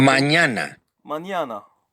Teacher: the letter ñ, the palatalized N